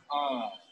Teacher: We're closing both lips and the air is escaping through the nasal passage. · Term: M sound